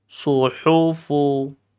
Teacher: kalau shad bibir tetap manyun ke depan, tapi lidahnya yang diangkat ke atas.